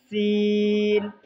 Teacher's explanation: ऊपर के चार दांत और नीचे के चार दांतों के किनारे पर ज़ुबान की नोक को लगाने से सीन अदा होते हैं। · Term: सीन का मखरज